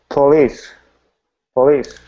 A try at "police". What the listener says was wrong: Good. There you go. All right.